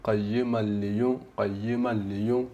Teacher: Proprio non senti né nun sakina né nessun ghunna, nulla. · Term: senza la ghunna